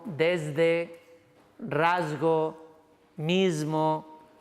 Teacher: la S ya no se hace sorda, sino que se hace sonora · Está de una sonora. Si tú a la S la haces seguir de una sonora, por asimilación, la S del español se convierte en Z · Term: S sonora